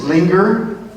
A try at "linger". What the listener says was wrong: you pronounce it well but could you hold the linger longer